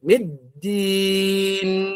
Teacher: Maliki yaumiddin, middin, dan jangan masuk ke hidung dulu. Dal itu masih di tenggorokan. Ketika masuk ke nun baru masuk ke hidung.